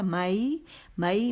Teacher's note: یا لین باریک ہے، جبڑا کھلے گا